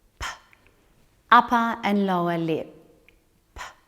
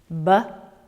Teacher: When I make these sounds, two surfaces come together to stop and then release the airflow. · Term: stop sounds